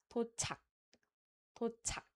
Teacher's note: it doesn't have any aspirated k sound, but it has the stopping sound